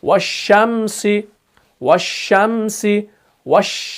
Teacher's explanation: पूरी आवाज फैल रही है और शीन अदा हो रहा है। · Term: सिफत तफशी